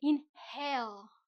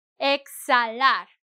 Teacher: I skip the H because it doesn't have a sound.